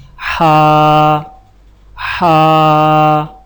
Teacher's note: زبان کی جڑ کو حلق کی طرف مضبوطی سے دباتے ہوئے باریک اور رگڑ کھاتی سانس میں پڑھیں